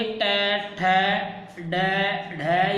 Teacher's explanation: जब आप इनको बोलोगे तो आपकी जो जीभ है वो मुड़ जाएगी और मुड़ के जो ऊपर का तलवा होता है वहाँ पे टकराती है, तो इस कारण इन हम व्यंजनों को मूर्धन्य व्यंजन बोलते हैं।